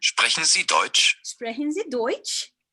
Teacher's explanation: Oxirgi kelganda intonatsiya ko'rasizmi, baribir ko'tarilyapti.